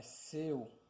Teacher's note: Então, o C, o E, ele está vindo mais forte e o U mais fraco. Então, o U, ele está sendo a semivogal, decrescente.